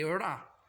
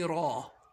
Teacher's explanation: But in Arabic, we say Ra, in a heavy form.